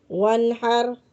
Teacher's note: نون ساکن ہے، آگے حروف حلقی ہا آ رہا ہے۔ ہا جو ہے نا وہ آ رہا ہے، اس لیے ہم یہاں پہ غنہ نہیں کریں گے، اظہار کریں گے۔